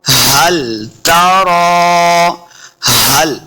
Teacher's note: हा है इसको हलक के निचले वाले हिस्से से अदा करना है सही तलफ़्फ़ुज़ के साथ।